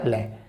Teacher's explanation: पार्श्विक वो होता है जीभ के बगल से वायु निकलती है